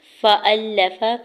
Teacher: فَأَلَّفَ، فا کے زبر کو جلدی سے ادا کرنا ہے، حمزہ کے زبر کو لام مشدد کے ساتھ ملاتے ہوئے لام کے زبر کو بغیر کھینچی ادا کریں گے